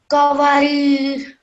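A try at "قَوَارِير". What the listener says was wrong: Here wa is 2 seconds as well. Qawarir. So it's qaf, not kaf.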